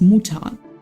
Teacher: Well, it's written like M-U-T-T-E-R. But in the official German pronunciation, Mutter isn't pronounced with the letter R. We just omit the letter R and say it as Mutter.